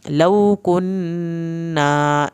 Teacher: نون کی شد پہ ایک الف کے برابر دیر لگائیں، الف پورا ادا کریں.